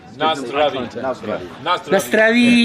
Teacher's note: emphasis is always on the first syllable.